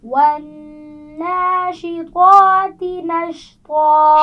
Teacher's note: طا کو موٹا پڑھیں گے لیکن اس کے بعد تا کو باریک پڑھنا ہے